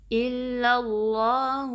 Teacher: پھر لام کو اللہ کے نام کے لام سے ملانا ہے، اس میں جلالہ کے لام سے ملانا ہے، اور اس کیس میں اس میں جلالہ کو جو لام ہے اس کو ہیوی پڑھنا ہے کیونکہ اس سے پہلے زبر آئی ہے. تو آپ نے خیال رکھنا ہے کہ جو پہلا لام ہے اللہ کا اس کو باریک رکھنا ہے، اس کو اللہ نہیں، اس میں زبان کو نہیں اٹھانا آپ نے.